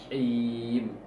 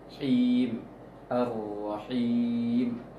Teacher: ha kecil yang kayak jim itu tengah tenggorokan